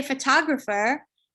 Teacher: the standard English pronunciation is photographer with stress on the second syllable, and the other syllables turn into a schwa